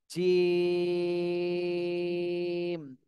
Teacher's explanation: জিম এটা কিন্তু শক্ত শক্ত হরফ শক্ত করে বলতে হবে জিম তিন আলিফ টান দিতে হবে এবং এটা শক্ত করে উচ্চারণ করতে হবে জিম বর্গীয় জ বাংলায় বর্গীয় জেভাবে উচ্চারণ হয় ঠিক সেইভাবেই কাছাকাছি